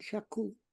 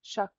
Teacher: it ends with a K, but purse your lips around the K. not shak. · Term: round our lips